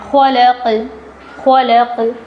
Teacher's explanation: خلق، یہاں پر قوف کی آواز میں کھٹکا آ رہا ہے